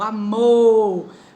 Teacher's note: A oxítona, ela tem mais de uma sílaba, tá bom? Só que a sílaba tônica dela é a última, sílaba mais forte